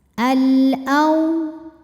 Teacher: alif lam menghadapi huruf qamariyah yaitu hamzah, maka lam sukun dibaca jelas. Al-au ada harfulin sebab ada waw sukun didahului harokat fathah, maka dibacanya lembut. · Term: alif lam qamariyah